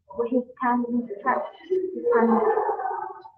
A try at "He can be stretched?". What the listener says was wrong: It should be like this. I'm sorry, the arrow is not correct. It should be with a natural rising tone.